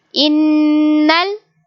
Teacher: we will make a gunna on noon like innal and we read noon with its real sound